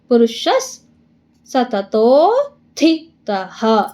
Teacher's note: ತ ಆದ್ಮೇಲೆ ವಿಸರ್ಗ ಇದೆ, ಹ ಹಾಕೊಳ್ಳಿ · ಪುರುಷಸ್ ಅರ್ಧ ಸಾ ಮಾಡ್ಕೊಳ್ಳಿ. ಸತತೋತ್ಥಿತಃ ತೀಗೆ ಮಹಾಪ್ರಾಣ ತೀ ಒತ್ತಿದೆ, ಅದಕ್ಕೆ ಇಲ್ಲಿ ತೀ ಒತ್ತಿ ಹೇಳ್ಬೇಕು